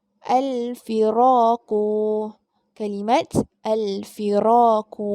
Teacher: huruf alif iaitu huruf mat di mana huruf sebelumnya berbaris fathah, berbaris atas. Jadi kita baca dengan kadar bacaan 2 harakat.